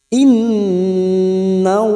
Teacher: Nun yang bertasdid gunnah musaddada kita dengungkan selama 3 harokat. Innallaha lam jalalah kita baca tafkim sebelumnya fathah. Nallaha ja fathah diikuti alif 2 harokat.